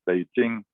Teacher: a voiceless unaspirated stop like in beijing as the same as a voice stop like in boy as